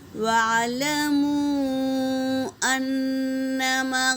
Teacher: مد منفصل، اسے 3 سے 4 الف کی مقدار کھینچیں گے، اور نون پر تشدید ہے تو غنہ کریں گے، اور الف سے پہلے زبر، الف مدہ۔